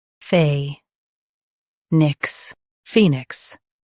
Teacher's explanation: Stress fee and keep nix light.